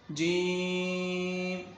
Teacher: 5 الف یہاں پر کھینچ کر پڑھیں گے کیونکہ یہاں پر مد آپ کو نظر آ رہی ہوگی، مد لازم ہے